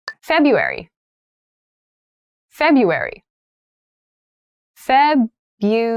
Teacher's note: february has an interesting spelling that first r isn't really pronounced